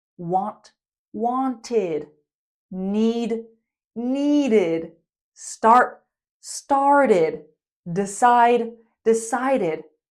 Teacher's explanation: If a verb already ends in the t or d sound, we pronounce ed, id, want, wanted, need, needed, start, started, decide, decided. You can hear that id adds an extra syllable.